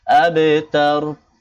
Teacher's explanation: আবে কলকলা বা কফত বা জিম দাল এই পাশে হবে, সাকিন হলে কলকলা করতে হয়, এখানেও কলকলা করতে হবে।